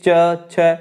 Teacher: च वर्ग के जितने भी आपके व्यंजन है यह सभी आपके इनका उच्चारण स्थान तालु है · च, छ, ज ये सब तालु के अंतर्गत आते हैं, क्योंकि आपकी जीभ ऊपर तालु में टच हो रही है। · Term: तालव्य